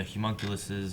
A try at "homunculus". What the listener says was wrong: I mean, it's you say it as if you're gonna say humongous. It's homunculus. It's with an O in the beginning.